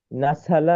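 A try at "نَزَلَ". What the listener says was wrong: নাসালা বলছো কেন? নাজালা ঝানা। নাজালা নাজালা নাজালা।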